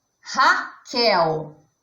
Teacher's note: A palavra Raquel é um nome próprio, que também é uma oxítona, porque a sílaba mais forte de Raquel é o quel, que está na posição última.